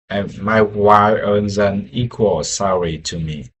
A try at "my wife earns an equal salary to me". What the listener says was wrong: Almost there. It's my wife earns instead of my Y earns. I think maybe the connection dropped and you were saying wife, but it sounded like